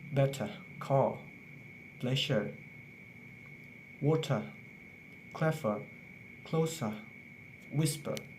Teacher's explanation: if an R is followed by a consonant or if it stays in the end of the word don't pronounce the r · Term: British accent